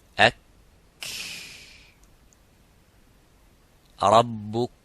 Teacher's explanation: But the kaf, there is some air coming. It doesn't stop slightly, but it makes that rakhawa, it makes the, makes that hams in the kaf.